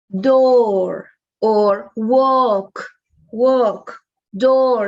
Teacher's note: it's a long oh it's very much similar to the spanish oh